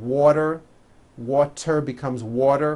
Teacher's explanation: when a T falls between two vowels, turns into a D, like in the word water.